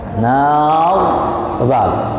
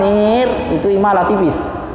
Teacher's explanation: Ra-nya harus tafkhim. Nar karena jatuhnya fathah di depannya. Nar tebal. Tapi kalau tipis nir niku jatuhnya nanti riwayatnya berbeda.